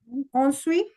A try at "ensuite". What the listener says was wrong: Ensuite. So what टी की sound आनी चाहिए last में. Ensuite.